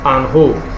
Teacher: After the preposition et and, example, e and n, some speakers might pronounce a hint of the letter n at the end before the h aspirate